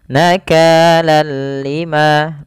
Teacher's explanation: Bi dengan la tidak gunnah berarti dengan tanpa gunnah, artinya kita membacanya hanya idgham saja tanpa disertai dengan gunnah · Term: idgham bila gunnah